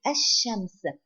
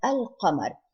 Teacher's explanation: Here Ash-Shams, we do not pronounce the Lam, and Al-Qamar, we pronounce the Lam. And let's see on top of the Lam here, Al-Qamar, you can see the sign of sukoon.